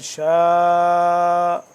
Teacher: یشاء، یہاں پہ غنہ کریں گے، شین الف مد زبر شاء، 4 سے 5 الف کے برابر اس کو لمبا کریں گے مد کی وجہ سے